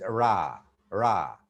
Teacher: It's pronounced with a contact between the tongue and the space just behind the alveolar ridge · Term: post-alveolar